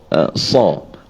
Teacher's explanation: makhraj tempat keluar huruf sad ni dengan huruf sin sama. Hujung lidah tadi kita datarkan dan letakkan di bawah gigi, di gigi bawah belakang tu